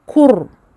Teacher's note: le ra ne sera pas aminci, nous allons l'entendre comme emphatique, gonflé. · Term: emphatiser ce ra